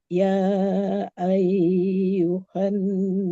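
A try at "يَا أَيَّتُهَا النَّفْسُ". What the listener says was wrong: Ada rata-rata memang ayyuha. Tapi ini ayyatuha. Ayyatuhan. tatnya. Bukan ayyuha. Bukan ayyuha. Ayyatuhan. Ya ayyatuhan.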